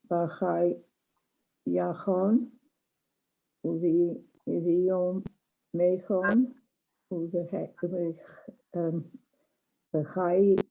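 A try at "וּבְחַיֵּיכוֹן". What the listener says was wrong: Good. Yes. V'chaye.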